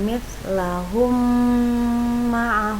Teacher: ada huruf mim mati bertemu dengan mim Nah harus kita baca dengung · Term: Idgham Mimi